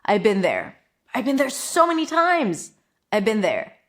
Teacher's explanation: the word have can also reduce to just a schwa. So actually without the V, just a schwa.